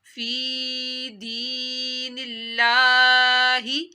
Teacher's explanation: یہاں پہ دیکھیں لفظ اللہ پتلا پڑا گیا ہے کیونکہ لفظ اللہ سے پہلے زیر تھی